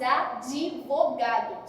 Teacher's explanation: Não existe o i no advogado, mas a gente acrescenta o i aqui.